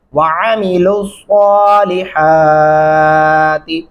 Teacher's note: یہاں پہ لسا صاد پڑھیں گے، لسا سین نہیں آپ نے ڈالنا ورنہ یہ غلطی ہو جائے گی